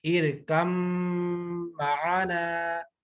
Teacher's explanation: آگے ہے با کا میم میں، تو ارکم معنا، ارکم، کاف کو ڈائریکٹ میم کے ساتھ ہم نے کر دیا، با کو کیونکہ مج کر دیا، با پڑھی نہیں جائے گی، میم میں ساری میم کی آواز نکلے گی